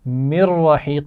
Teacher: نون ساکن کے بعد را آ گیا ہے تو یہاں ہم را سے ملا کر تو پڑھیں گے لیکن غنہ نہیں کریں گے